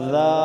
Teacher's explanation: آگے دال کھڑی زبر دا. ایک الف کی مقدار لمبا کریں گے، کھڑی زبر اور دال کو نرمی سے پڑھیں گے، نرم حروف سے.